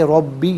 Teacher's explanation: रा पर ज़बर है, रा को पुर करके पढ़ेंगे